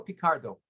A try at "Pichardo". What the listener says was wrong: Pichardo. the H is not silent.